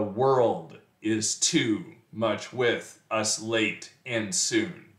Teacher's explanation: that's that's a line of iambic pentameter five Iams in a row